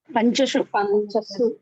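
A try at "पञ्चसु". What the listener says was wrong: Panchasu, not Panchashu. Panchasu, Sakara.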